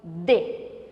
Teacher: d novamente precisei dos elementos da boca para fazer articulação de inconscientemente você pronunciou o e que é uma vogal